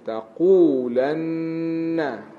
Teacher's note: nun musyaddadah dengung panjang di situ